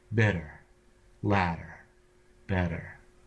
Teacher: the tongue either brushes by the alveolar ridge, just sort of gently grazing it, or passes below it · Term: flap